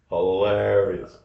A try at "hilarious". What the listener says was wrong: actually, there is no A in the part that you're pronouncing with an A.